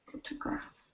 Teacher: The stress is on the first syllable in this word, photograph.